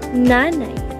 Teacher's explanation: Ang paraan ng artikulasyon sa letrang N ay pailong o nasal at ang punto ng artikulasyon ang pangipin o dental. Ito ay may tunog.